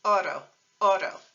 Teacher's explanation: in Spanish we stick with a t and then we use that little quick R sound from the tip of the tongue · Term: Spanish single r